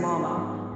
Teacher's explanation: When both characters are the same, very often the second character loses its original tone and takes on the neutral tone instead.